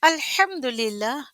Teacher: ہا ہے وسط الحلق سے نکلنے والا حرف، اگر اس کو ہم نے اس کا حق نہ دیتے ہوئے ہا کر کے پڑھا تو میننگ بدل جائے گا.